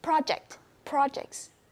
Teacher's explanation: we put stress on the first syllable